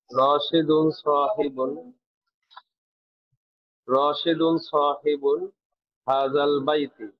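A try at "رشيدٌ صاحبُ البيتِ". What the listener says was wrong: আবার বলেন শব্দের শেষের হরকতটা স্পষ্ট করে দিবেন আবার বলেন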